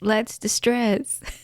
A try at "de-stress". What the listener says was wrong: You're saying distress. Are you trying to say de-stress?